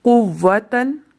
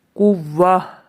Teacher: یعنی جب بھی تا آئے گی چاہے اس پہ کوئی بھی حرکت ہو، اس کو وقف کرنے کی صورت میں ہا ساکن سے بدل دیں گے